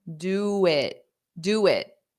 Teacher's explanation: So my mouth is in this rounded position, and then I need to go to it. So I'm going to use that W as a glide.